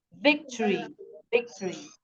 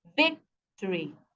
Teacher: The syllable, the stress here is on the first syllable